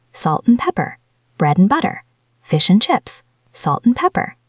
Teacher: We often drop the D and turn the A into a schwa. It becomes und, or even just n.